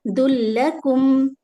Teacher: اس کو لام میں ملائیں گے اور ادغام بلا غنہ، یہاں پر ٹائم نہیں دیں گے، بالکل جلدی پڑھیں گے